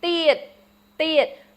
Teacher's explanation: So in the ia sound, the e is the one that's accented. So tiet. Remember, it's not tiet or thiet.